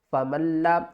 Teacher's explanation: میم بنا. میم کو ہم لام سے ملائیں گے، لام کے اوپر سختی کریں گے